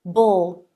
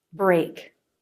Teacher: The position for the R is front of tongue pulled back and up. Lips flare. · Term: BR consonant cluster